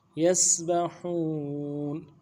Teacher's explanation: با کو نرم سے ادا کریں گے، ہا کو واو کے ساتھ ملانا ہے، واو مدہ بھی ہے، ایک الف مدار میں کھینچیں گے، نون کو ساکن کریں گے.